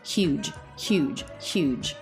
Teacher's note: So in American English, we don't drop this H, but it's also not very throaty. It's just a very light escape of air.